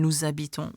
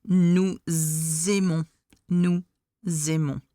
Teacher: So you will have it nous habitons with a Z sound, because the se, nous, is transformed into a z, because the letter afterwards is either an H or a vowel. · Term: liaison